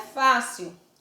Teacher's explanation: mais fácil não é oxítona porque a sílaba tônica é fa